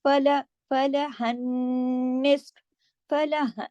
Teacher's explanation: फिर देखिए फला, फला हन्निस, फला, हा को नून के साथ जब तशदीद है जोड़ेंगे, तो तशदीद है नून पर, तो नून पर गुन्ना होगा